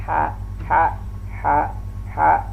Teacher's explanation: Nah, huruf ha ini huruf khalqi, bagian tengah, tenggorokan bagian tengah, dan dia termasuk rakhawah, berlalu. Ha, dan dia termasuk al-hamas, ada mengeluarkan udara atau napas di saat kita melafalkan huruf ha. Dan dia juga pun termasuk al-istifal.